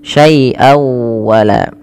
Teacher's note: masukkan suara tanwinnya pada lafal syai'an kepada huruf waw dengan kita kenal dengan istilah idgham, memasukkan bi gunnah.